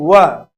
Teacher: इसलिए व का उच्चारण स्थान होगा दांत और ओष्ठ यानी होठों की मदद के कारण दंत ओष्ठ।